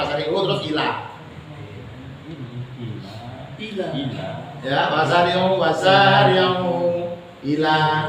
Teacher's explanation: Mad jaiz munfasil. Panjangnya bisa 2 harokat atau bisa 6 harokat, bebas.